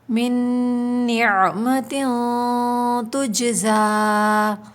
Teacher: زا کے اوپر کھڑا زبر ہے، اس کو ہمیں کھینچ کے پڑھنا ہے